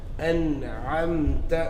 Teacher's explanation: Again, you don't elongate it as أَنْعَمْتَ. Short and sharp.